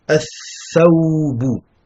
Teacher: Tha, c'est une lettre shamsiya, car vous avez une shadda sur le tha et pas de soukoun sur le lem. Et le lem ne se prononce pas.